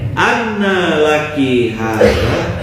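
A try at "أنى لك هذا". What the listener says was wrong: Lakinya tidak panjang ya.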